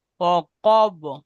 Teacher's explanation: কব, কব, কব উচ্চারণ করবার সময় وقب ঠোঁট গোল থাকবে